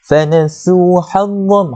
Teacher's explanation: Fanasu hazzam, fanasu, sin lah, huruf sa, sin. Fanasu dengan sa yang keluar lidah